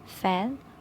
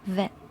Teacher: Both are labod dental fricatives. F is voiceless and v is voiced. Voicing distinguishes meaning fan versus vent. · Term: labiodental fricatives